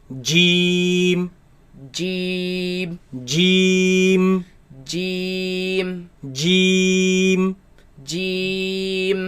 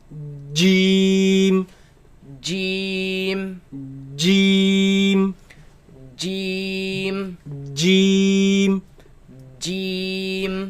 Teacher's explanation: comes from the middle of the tongue against the middle of the upper palate